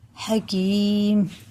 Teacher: یا ساکن سے پہلے زیر ہے تو کھڑے زیر کی طرح اسے ہمیں کھینچ کے پڑھنا ہے، بڑا ہے حکیم.